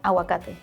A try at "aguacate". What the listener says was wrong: You don't pronounce the G sound. Agua, but she doesn't pronounce the G.